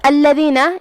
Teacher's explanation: لام پہ تشدید ہے، 2 حرف کے برابر لام کو پڑھنا ہے. دال کی ادائیگی زبان کے سر اور اوپر والے دانتوں کے اندرونی کناروں سے ہے.